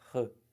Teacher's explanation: Sai pela garganta, mas é um som só. R. Duas letras que representam um fonema.